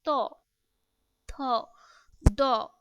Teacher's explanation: জিহবাটা উপরের দাঁতের নিচের অংশের সাথে লাগতেছে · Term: দন্ত ধ্বনি